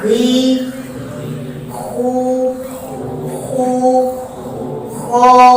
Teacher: setiap huruf isti'ala, suara tekanan suara kita tetap kita arahkan ke atas dan hasilnya tetap tebal, walaupun seolah-olah khi itu nampaknya tipis